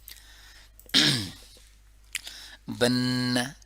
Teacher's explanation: strong, سخت ناک کی آواز، صرف ناک میں جو ہوتی ہے آواز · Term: غنہ